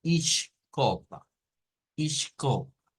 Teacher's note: en el caso de de de Portugal Pues nótese que aquí aparecería una sh O sea no se leería como is o como es sino